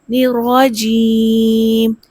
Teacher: الرجیم میں را کو پر کر کے پڑھیں گے اور آخر پہ مد عارض کریں گے